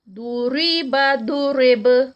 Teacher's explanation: پہلے داد کو موٹا کریں گے اور پھر جب اس کو روکیں گے تو با کا قلقلہ